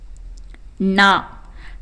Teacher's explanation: நாவின் நுனி மேல்வாய் அன்னத்தின் நடுப்பகுதியை தொடுவதால் பிறக்கும் எழுத்து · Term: வல்லின எழுத்து